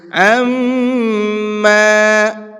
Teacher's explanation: میم کے اوپر تشدید ہے یہاں پر غنہ کریں گے